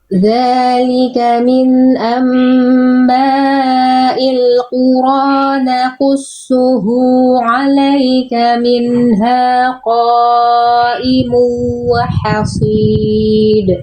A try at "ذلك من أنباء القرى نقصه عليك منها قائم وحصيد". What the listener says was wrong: Idgham bigunanya kurang tahan.